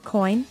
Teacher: For example, in the word coin, the joy makes a diphthong sound, starting with O and gliding into I in one go